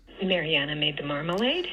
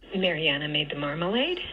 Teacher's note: we do have L stars on Mariana and on marmalade